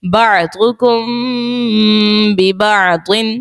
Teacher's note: میم ساکن کے بعد با ہے، اخفاء شفوی کا قاعدہ ہوگا اور غنہ بھی کریں گے